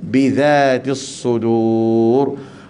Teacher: Innahu alimun bidzatis sudur. Pastikan zal di sini jangan bunyi bizatis sudur dengan zai, tak boleh. Dia kena dengan dz, bidzatis sudur.